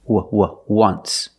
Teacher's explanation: phonetically it's not a vowel phonetically it makes the sound like a w